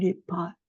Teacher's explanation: les pâes normalement on dit les pâtes on ouvre plus donc quand on a le son ouvert on prononce aussi un peu moins vite on va accentuer sur ce a